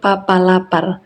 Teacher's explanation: Selanjutnya ada konsonan hambatan letup dalam bahasa Indonesia. P. Hambatan letup bila bial tak bersuara. · Hambatan letup bilabial tak bersuara, contoh papa lapar.